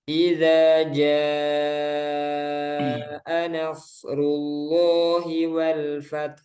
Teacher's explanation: Kalau jaa ini kan 4 atau 5 harokat. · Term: mat wajib